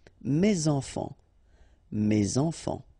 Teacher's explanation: Okay, so it goes like that, and then ending with S. Enfant, children is starting with a vowel, so you should make the liaison